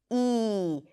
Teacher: This is a front vowel, meaning that the tongue rolls forward to produce this sound. It's a high vowel, so the tongue rolls forward as high as possible before it touches the upper palate to produce this sound. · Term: high /i/